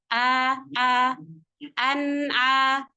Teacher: an menggunakan Hamzah makhrajnya dari tenggorokan bagian bawah